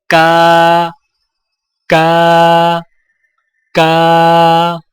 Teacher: کاف باریک آواز، ادائیگی کے وقت زبان کی جڑ کو کوے کے قریب تالوں پر لگائیں، جیسے کا، کا، کا۔